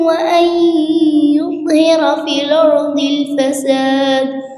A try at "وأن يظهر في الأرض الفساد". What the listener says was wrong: يظهر رقق الراء.